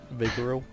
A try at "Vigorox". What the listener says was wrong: Vigorox. There's an X in there. It's definitely Vigorox.